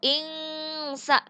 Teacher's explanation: Ikhfa, di sini nun mati bertemu dengan sa dan dibacanya adalah dengung dan ditahan selama 3 harkat. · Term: ikhfa hakiki